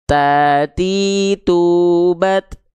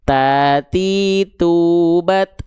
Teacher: ujung lidah kita kita sentuhkan ke pangkal gigi seri atas kita. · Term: makhraj ta